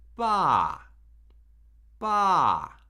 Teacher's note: Fourth tone is the falling tone, or it's sometimes known as the falling tone, right? We start where the first tone lives, and then we immediately start decreasing in pitch, almost all the way down to the low end of the spectrum.